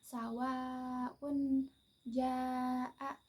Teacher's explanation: mad wajib muttasil yaitu dibaca dipanjangkan di mana Mad tabii bertemu dengan huruf hamzah